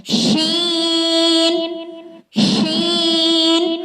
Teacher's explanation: زبان کے درمیان والا حصہ جب اوپر کے بالمقابل تالو سے لگے تو یہ حروف ادا ہوتا ہے۔ شین، شین، تالو جس طرح آپ لوگ کو بتایا تھا بالکل زبان کے درمیان ہم نے شین کے ساتھ لگانا ہے۔